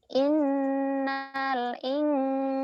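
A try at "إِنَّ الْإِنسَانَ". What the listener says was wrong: innal, Bu. Jangan innal, jangan, nggak ada yang panjang. Innya yang panjang, nalnya ditahan. Nalnya dilepas, idhar komar ya. Innal, ayo. Innal. Innal insana lafi khusr.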